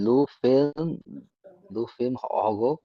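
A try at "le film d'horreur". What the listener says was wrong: দোঘক হবে। দোঘক, D stop দিতে হবে ওখানে। ঠিক আছে, লো ফিল্ম লো ফিল্ম দোঘক, হ্যাঁ হ্যাঁ, ওকে, লো ফিল্ম দোঘক, right, the horror ফিল্ম।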